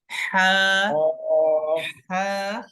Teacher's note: नीचे वाला हिस्सा आपका थ्रोट का लोअर पार्ट, वहां से अदा होगा। हाँ, जिस तरह सांस हम निकालते हैं ना हाँ, हलक से, हाँ हाँ, हाँ, हाँ, यानी कहाँ से अदा हाँ, हो रहा है, हमारे हलक के नीचे हाँ, वाले हिस्से से अदा हो रहा है।